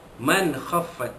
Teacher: nun mati jumpa dengan kha, hukumnya izhar halqi, menyatakan bunyi nun mati bertemu dengan huruf kha